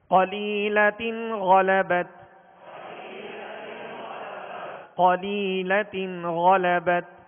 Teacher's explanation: قاف کو پر پڑھیں گے حروف مستعلیہ میں سے ہے